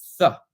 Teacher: a th sound with the tongue going kind of to the back of your teeth and breathing through it